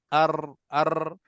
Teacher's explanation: sukun yang pertama getaran pada tepi lidah bahagian depan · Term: getaran ra